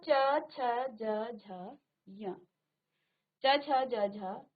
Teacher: तालव्य इनको कहा गया है क्योंकि इनका उच्चारण तालु से होता है।